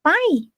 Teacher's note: then we say bye at the end but in high tone like bye